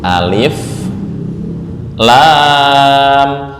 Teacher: Lam ini panjangnya 6 harokat.